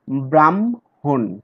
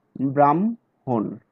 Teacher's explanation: কিন্তু আমরা উচ্চারণ করি ম প্লাস হ, যেমন ব্রাহ্মণ, ম আগে বলি তারপরে হ বলি, ব্রাহ্মণ।